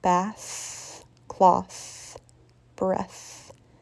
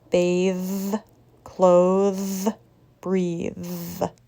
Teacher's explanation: the first word is voiceless bath cloth breath the second word is voiced bathe clothes breathe